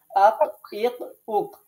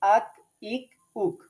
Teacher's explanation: জিহ্বার গোড়া তার বরাবর উপরে তালুর সাথে লাগাইয়া কফ মোটা করে